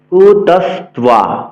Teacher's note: এক্ষেত্রে বফলার উচ্চারণ বহাল রাখতে হবে, দন্তস্বকে এস এর মতো উচ্চারণ করতে হবে। কুতস বলা যাবে না, কুতস্ত্বা বলা যাবে না, বলতে হবে কুতস্ত্বা কস্মালা মিদম।